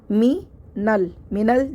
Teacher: حمزۃ الوصل درمیان میں آنے کی وجہ سے گر گیا، ہم ساکن والے حرف سے ملا دیں گے کیونکہ ساکن کا کام ملانا ہوتا ہے، ہم اس کو زبر کو ساکن سے فوراً ملا دیں گے، حمزۃ الوصل درمیان میں آ رہا ہے، اس پہ کوئی حرکت نہیں ہے، ہم اس کو فوراً سے ملا دیں گے ساکن سے۔